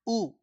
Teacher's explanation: उ बिना होठ को मिलाए हम बोल नहीं सकते हैं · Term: ओष्ठ ध्वनि